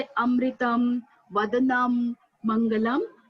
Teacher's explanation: जब हम हिंदी और संस्कृत में जब शब्द के अंतिम अक्षर पर अनुस्वार या बिंदी होता है तो हम उसका उच्चारण म के रूप में करते हैं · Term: म चा उच्चारण